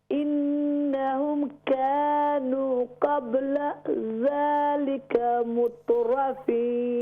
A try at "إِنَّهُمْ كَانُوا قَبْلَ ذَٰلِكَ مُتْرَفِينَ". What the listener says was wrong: Yeah, we pronounce the full waw madda. إنهم كانوا full madda.